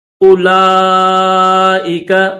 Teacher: حمزہ کے بعد ڈائریکٹ لام کی آواز نکالیں گے، واو نہیں پڑھیں گے، او نہیں پڑھیں گے۔